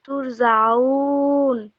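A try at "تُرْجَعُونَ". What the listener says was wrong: তুর জাউন, জিম শক্ত করে।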